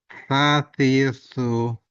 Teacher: ujung lidah bertemu gigi atas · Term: huruf s yang pertama